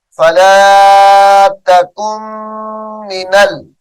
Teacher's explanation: توڑ کرتے ہوئے نون ساکن کا نام لیں گے لیکن جب جوڑ کریں گے تو اس نون کو چھوڑ دیں گے کاف کو ڈائریکٹ میم مشدد کے ساتھ ملائیں گے فلا تکن